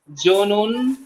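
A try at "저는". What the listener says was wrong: তবে এটা জনুন হবে না। এই জিউত যদি শব্দের প্রথমে থাকে ও হালকা হয়ে যাবে।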